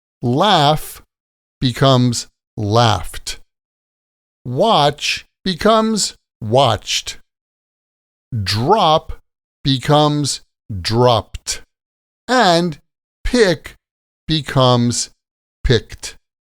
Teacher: So, like there's no extra syllable here, just a strong t sound at the end.